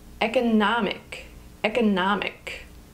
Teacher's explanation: economic has four syllables economic with the emphasis on the third syllable